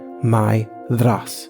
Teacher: with the accent on the first syllable and a voiced th, as in bother, thereupon, or loathe.